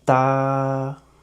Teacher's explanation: The first tone is a flat and a high-pitched tone. It's like a da.